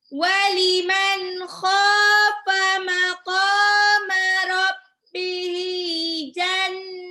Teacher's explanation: Jannatan, mad arid disukun. Dibaca 2 sampai 6 harokat.